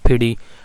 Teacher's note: वो ठी और डी के दरमियान एक साउंड बोलते हैं